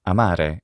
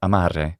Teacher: But when R is singular, it's not trilled in Italian when it's intervocalic like this. It's in fact just an alveolar tap.